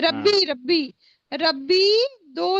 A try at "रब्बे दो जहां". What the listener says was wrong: रब्बी नहीं पढ़ेंगे, रब्बे पढ़ेंगे।